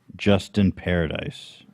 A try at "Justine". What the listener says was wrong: Right, with the E. Justine.